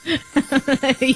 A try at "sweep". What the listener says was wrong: Sweep. Not sweet.